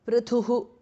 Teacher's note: Prithuhu thas mahapranah, visarga changes to repha or r